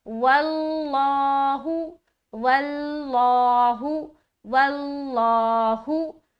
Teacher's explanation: आगे वल्लाहु, वो लाम जबर वल, लाम खड़ा जबर अल्लाह, हा पेश हु, लफ्ज अल्लाह का लाम है, उससे पहले जबर है, जाहिर बात है कि लफ्ज अल्लाह का लाम को क्या करना, मोटा करना।